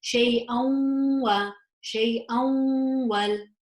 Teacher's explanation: I would pronounce this with idgham with the gunna, and so I would say it as shay'an wa, shay'an wal.